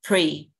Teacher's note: Pre, bật âm pờ ra.